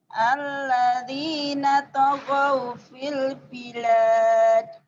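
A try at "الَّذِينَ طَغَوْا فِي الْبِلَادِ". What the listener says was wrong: Kolkolahnya mana? Kolkolahnya. Ujungnya.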